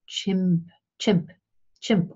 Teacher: squish the airstream then we have a fricative or a sibilant we can actually combine stopping the airflow and squishing it